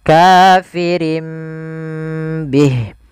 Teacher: Iqlab itu mengganti suara nun menjadi suara mim. Maka di sini ditandai dengan huruf mim kecil.